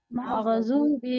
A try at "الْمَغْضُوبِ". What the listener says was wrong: मगा नहीं बोलना है, मग़ज़ूबी